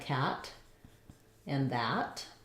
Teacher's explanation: the ah is a front open vowel · the a is a front open vowel, lax. It's in words like cat and that.